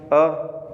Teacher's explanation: मध्य भाग में अ आएगा, जीभ का मध्य भाग प्रयोग में आएगा तब अ बोला जाएगा।